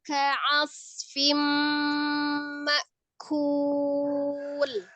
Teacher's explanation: hati-hati mim sukunnya tidak dipantulkan